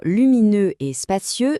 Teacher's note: ce son E à la fin, il faut bien arrondir les lèvres